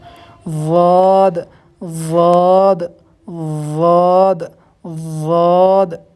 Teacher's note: یہ کیسے نکلے گا کہ جو زبان کی جو کروٹ ہوتی ہے، یعنی سائیڈ کا جو حصہ ہوتا ہے، جب اس کو اوپر کے جو سائیڈ کی جو داڑیں ہیں، دانت ہیں سائیڈ کے، جب ان سے لگائیں گے تو ضاد نکلے گا، ضاد۔ کسی بھی طرف آپ چاہے سیدھی طرف کے اوپر کے سائیڈ کے دانت ہیں ان سے لگائیں، یا الٹی طرف کے یعنی بائیں طرف کے جو اوپر کے دانت ہیں ان سے اپنی زبان کی کروٹ کو لگائیں تو ضاد نکل جائے گا۔